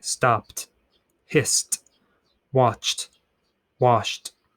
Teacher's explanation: T sound happens after voiceless sounds.